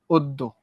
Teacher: জ ফলা যদি কারোর সঙ্গে যুক্ত হয় তাহলে তার উচ্চারণটা কেমন হয়ে যায়? দ্বিত্ব উচ্চারণ হয়, বা দুইবার উচ্চারিত হয়। দেখো অদ্য, অদ দয় ওকারে দো, অদ্য।